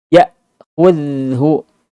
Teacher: Ya ditekan karena asyiddah ketika hamzah sukun.